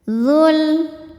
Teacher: Cara bacanya panjang 2 harokat. Namun ketika diteruskan atau diwasolkan, dzal ini dibaca pendek karena wawnya gugur. Ada proses namanya takhallus bil hadzfi.